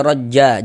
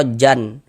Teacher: Ini kalau kita berwakaf di huruf jim ini kita baca rajja, jangan dibaca rojjan. Kita panjangkan 2 harokat.